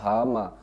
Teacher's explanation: बा, भा, मा, तो सारे में किसका है, ओठों के द्वारा बोला जाता है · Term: ओष्ठ